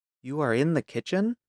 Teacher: A statement with a rising tone becomes a question.